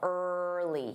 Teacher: In the word early, you want that long R as well, early. You want to make sure you hear that R, early.